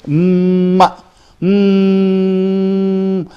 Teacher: Although I stop the air here, but still the air comes through the nose, that's why I'm able to make a ma. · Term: nasal sounds